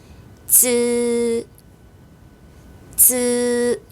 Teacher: 혀가 윗니 뒷부분에 닿았다가 떨어지면서 발음. 다시 한번 쯔. 혀를 밀면서 쯔, 쯔.